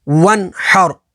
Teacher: نون ساکن کے بعد ہا ہے، ہا حروف حلقی میں سے ہے تو یہاں پر اظہار ہوگا، یعنی نون ساکن میں غنہ نہیں کریں گے، اور را ساکن سے پہلے زبر ہے تو یہاں پر را کو پر یعنی موٹا پڑھیں گے۔